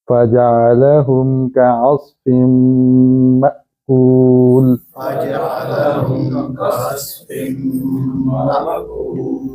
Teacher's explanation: جب مأکول کہیں گے تو زبان لام کے وقت جڑی رہے گی، ہٹے گی نہیں، وگرنہ قلقلہ ہو جائے گا۔